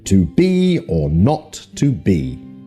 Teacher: i am this two-syllable foot is like a reverse trokey so the first syllable is unstressed and the second is stressed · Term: the I am